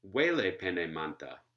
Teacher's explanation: Six syllables, welepenemanta, where again we have primary stress on the first syllable, and then every other syllable, alternating syllables for the rest of the word, we get secondary stresses. And this is said to be totally systematic in Marinuku, as it is in many Australian languages.